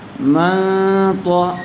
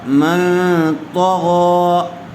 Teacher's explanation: نون ساکن کے بعد حروف اخفاء میں سے تو آیا ہوا ہے تو غنّے کے ساتھ اخفاء کر کے پڑھیں گے